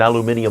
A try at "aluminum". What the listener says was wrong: Did you say aluminium? It's pronounced aluminum, dude. the thing about that is in that implies that there's two eyes. There's only one. It's the alum.